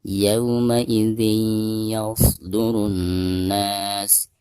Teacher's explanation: harus diidghamkan langsung ke huruf ya yang ada di depannya ya, disertai dengan gunah. Yauma idzin yasdurun nas, dari ru langsung ditasdidkan disertai dengan gunah kena ya. · dari ru langsung ditasdidkan disertai dengan gunah kena ya. Karena alif lam di sini dihukumi alif lam syamsiyah, jadi tidak dibaca ya atau tidak dianggap. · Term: idgham bigunah